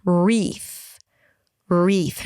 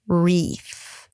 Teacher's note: Round your lips both for the W and the R.